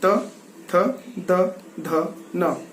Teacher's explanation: तो ये टंग जब दांतों से टकराई तो हिंदी के विद्वानों ने इसको कहा कि ये दंतव्य ध्वनियां हैं या वे ध्वनियां हैं जिन्हें दांतों के माध्यम से, दांतों की सहायता से बोला जाता है।